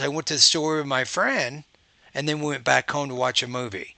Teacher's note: So what you want to do is you have kind of an even tone until you get the end of the thought group, right? At the end of that thought group, if it's not the last word in the sentence, your tone goes up slightly and then you keep moving in that way.